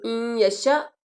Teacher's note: اب آپ نے ذرا غور کرنا ہے، این یشاء، شا شین کے اوپر زبر ہے اور آگے الف ہے، الف کے اوپر کیا ہے؟ ساکن، تو یہ الف نہیں، اصل میں یہ حمزہ ہے، ٹھیک ہے۔ این یشاء، جھٹکا لگائیں گے اس کو